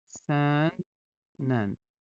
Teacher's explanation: Məsələn, deyirəm ki, sən də bax görürsüz N-dan sonra işləndi tələffüzdə olacaq sən nən. Burda dənin nən olmasına səbəb özündən əvvəl n samitinin gəlməsidir.